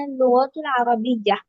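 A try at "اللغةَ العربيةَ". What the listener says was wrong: লুগাতাল লুগাতাল আরবিয়া, লুগাতাল জবর হবে, হ্যাঁ।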